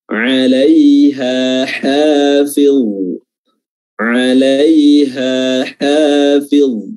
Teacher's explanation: Tapi di dalam bahasa Arab ada dua ha, yaitu ha yang keluar dari aqsa al-halq, ya, tenggorokan paling dalam, dan ha yang keluar dari wasatul halq, tenggorokan bagian tengah.